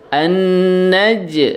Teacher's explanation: Nah, itu jimnya di situ adalah qalqalah sughra ya. Nah, qalqalah sughra dipantulkan. Ada pantulannya yang keluar dari huruf jim.